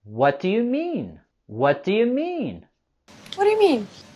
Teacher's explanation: we want to go higher with our intonation on the words what and mean.